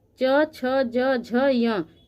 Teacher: ये वर्ण है यह सभी तलव्य के अंतर्गत आते हैं क्योंकि यह हमारे तालू के स्पर्श से उच्चारित होते हैं इसलिए इसको तलव्य ध्वनि कहते हैं